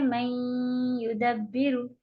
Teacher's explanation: तो इसको कहते हैं इदगाम नाकिस, जिसके सिर्फ दो हुरूफ हैं या और वाव। जब हम इदगाम नाकिस करते हैं तब हम गुन्ना भी करते हैं, क्योंकि हमने नून का गुन्ना बीच में बाकी रखा है। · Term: इदगाम नाकिस बगुन्ना